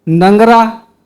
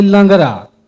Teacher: सरगुजिया में बहुत जगह न कर जगह में ल का प्रयोग होती